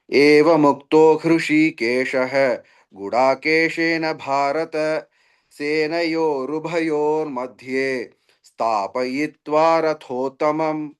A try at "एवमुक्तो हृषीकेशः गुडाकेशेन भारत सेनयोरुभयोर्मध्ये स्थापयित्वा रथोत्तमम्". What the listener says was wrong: Rathottamam. Earlier you missed that Anuswara. That's why I asked you to recite. Now it is heard, but it can be more clear. Rathottamam.